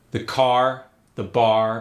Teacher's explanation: R sound goes to ah.